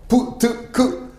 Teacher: 허파에서 소리를 팡 터트리면서 내는 소리